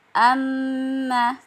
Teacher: jadi dalam al-qur'an eh akan selalu ada tasdid di depannya Jadi huruf mim sukun ketika dan ketika bertemu dengan huruf mim yang hidup maka dia akan berubah menjadi tasdid dan sifatnya didengungkan dan ditahan dua harakat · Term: idgam Mimi, idgham mimi